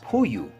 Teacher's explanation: Para producir el sonido de este tipo de consonantes, primero se ponen los labios juntos, produciendo de esta manera el sonido oclusivo. Y en segundo, al separar los labios, no se deja salir el aire libremente, sino que se sopla al mismo tiempo, como apagar una vela, produciendo de esta manera la aspiración. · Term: Consonantes aspiradas